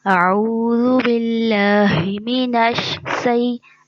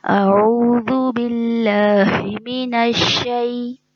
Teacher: शीन में शोर है, जो इसकी सिफ्त है, इसको वाज़े करके पढ़ना है